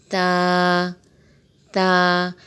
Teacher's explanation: زبان کی نوک سامنے والے اوپر کے دو دانتوں کی جڑ میں لگے تو تا ادا ہوتا ہے، تا۔ یہاں بھی اگر آپ دیکھیں کہ تا کو کھول کے لکھا ہوا ہے تو اسے بھی ایک الف کے برابر کھینچ کے پڑھیں گے، تا۔